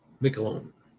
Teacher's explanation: I know the first syllable has all the emphasis.